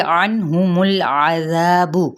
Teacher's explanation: عنہم العذاب، عین زبر نون عن، عین کو وسط حلق سے نون پہ اظہار کریں گے · میم کی پیش کو لام کے ساتھ ملائیں گے مگر لام کو ہلانا نہیں